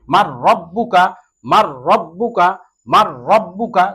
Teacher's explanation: এই ইদগামে বেলাগুন্নার হরফ হলো দুইটি, র এবং লাম, র এবং লাম। এখানে মিলিয়ে পড়তে হবে ঠিকই, কিন্তু গুন্না ছাড়া, গুন্না সহিত না, গুন্না ছাড়া মিলিয়ে পড়তে হবে